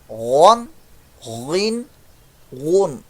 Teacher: تو گن نہیں ہے یہ، غن ہے حلق کے اوپر والے حصے سے